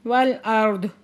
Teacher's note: والارض، را ساکن سے پہلے زبر ہے تو را کو پورا آواز سے پڑھیں گے، اور داد کو ہم نے ساکن کر دینا ہے کیونکہ وقف مطلق آ گیا